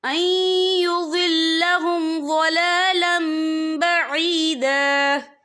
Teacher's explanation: یہ دیکھیں أَن يُضِلَّهُمْ ضَلَالًا، لام کے پر تنوین ہے، تنوین کے بعد جو ہے با آ رہا ہے، تو یہاں پر انقلاب ہوگا، یعنی تبدیلی ہوگی. ہم جو ہے تنوین کو جو ہے میم کے ساتھ ملا کر پڑھیں گے اور ہم یہاں غنہ بھی کریں گے، اور غنہ کی مقدار جو ہے 2 سے 3 سیکنڈ ہوگی.